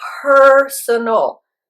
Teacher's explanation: Also, you have to be careful with the pronunciation, because personal, in that word, the stress is on the first syllable.